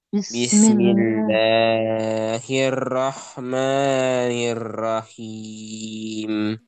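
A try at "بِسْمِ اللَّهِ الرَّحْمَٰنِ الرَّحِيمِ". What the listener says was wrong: Masih kepanjangan sedikit. Sekali lagi.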